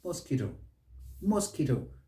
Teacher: no it's mosquito mosquito stress is on that second syllable